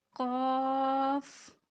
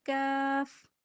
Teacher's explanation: یہ جو دو نقطوں والا قاف ہوتا ہے نا اس کو موٹا ادا کرتے ہیں، اور جو دوسرا ہوتا ہے اس کو باریک ادا کرتے ہیں، دونوں میں فرق دیکھیے، ابھی میں موٹے والا کر رہی ہوں دو نقطوں والا قاف، ابھی دوسرا دیکھیں کاف، دونوں میں فرق ہے، ٹھیک ہے، موٹا اور باریک۔